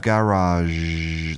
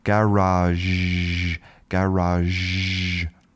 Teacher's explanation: you can hear at the end we have garage. That's our voiced sh.